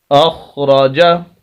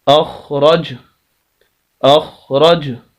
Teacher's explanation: آخری لفظ اس لائن کا حمزہ زبر خا اخ، را زبر را، اخ را، جیم زبر جا، اخراجا۔ اگر ہم یہاں پر وقف کرنا چاہیں تو آخری حرف جیم کو ہم ساکن کریں گے، جیسے پیچھے یہ ساکن پہلے سے ہی موجود ہے، لیکن اس کو اگر ہم ساکن کریں گے، اس پر بھی جزم اس طرح کی لے آئیں گے تو اس کی زبر ختم ہو جائے گی، تو وقف کی حالت میں یہ لفظ پڑھا جائے گا اخرج، اخرج، اس طرح وقف ہوگا۔